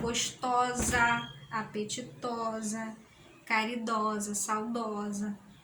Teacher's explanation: Nas derivadas em oso, né? A tônica do sufixo categoricamente sofre alternância vocálica submorfêmica, no caso, passando a apresentar uma média posterior aberta.